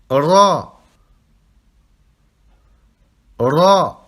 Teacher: Vous roulez le R.